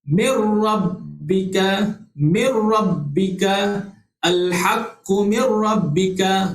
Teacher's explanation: Jadi kita tak boleh dengung lah sini. Daripada huruf nun yang mati terus sebut huruf ra selepas nun mati tu. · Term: idgham bila gunnah